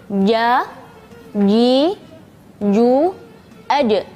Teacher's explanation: makhraj tengah-tengah lidah. Tengah-tengah lidah dan langit-langit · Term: huruf jim